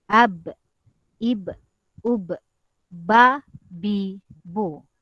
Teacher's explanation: bibir atas dan bibir bawah ini akan berjumpa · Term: huruf ba